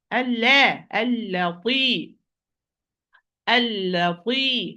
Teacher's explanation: And here, why you are going, maybe some will commit mistake, because after lam we have a heavy letter. So do not allow the heaviness of the ta affect the lightness of lam.